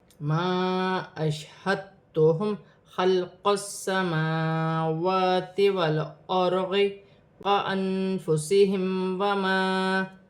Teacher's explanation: الف مدہ بھی بن رہا ہے، چھوٹی مد بھی ہے، مد منفصل 3 الف کی مقدار تک کھینچ کر پڑھا جائے گا۔ الف مدہ کو ملا کے 4 الف کی مقدار تک کھینچ کر پڑھا جائے گا۔